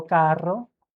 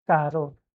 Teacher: with double R, you can just extend it a little bit, even if your R's are not rolling